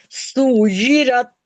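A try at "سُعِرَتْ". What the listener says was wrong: या नहीं है, आइन है। सुर, सुर आइन है। सुरत। सुरत। सुरत।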